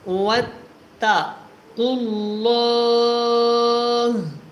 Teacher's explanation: اینڈ میں جو ہا ہے اس کو ہم نے کیا کر دینا ہے؟ ساکن کر دینا ہے، کیونکہ آخری لفظ ہمیشہ ساکن ہو جاتا ہے، سکون میں جو ہے وہ آ جاتا ہے جب ہم وقف کرتے ہیں.